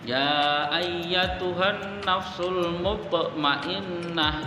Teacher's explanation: huruf to-nya berharokat sukun, maka membacanya harus dipantulkan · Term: qalqalah